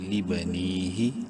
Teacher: یا مدہ ہے، نون کو ایک الف برابر لمبا کریں گے